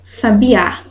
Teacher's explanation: Aqui nós temos sábia é uma paroxítona e penúltima sílaba tônica